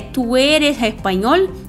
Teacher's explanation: o E e o O são mais fechados, não são abertos que nem no português